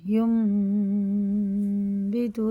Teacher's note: تنوین نون ساکن بعد چھوٹا سا میم آتا ہے، اس کے بعد با آتا ہے، تو یہ غنہ اور اخفا دونوں کر کے پڑھنا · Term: اقلاب